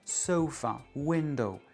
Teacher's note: il y a vraiment 2 syllabes dans la racine, on ne peut pas couper le mot en deux, il n'y a pas de préfixe, pas de suffixe. L'accent tombe sur la première syllabe.